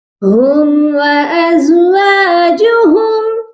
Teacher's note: ہم وازواجہم، یہاں پر دیکھیے ہم کے ساتھ بھی میم ساکن ہے، وازواجہم یہاں پر بھی میم ساکن ہے، اور دونوں میم ساکن پر غنہ نہیں ہوگا۔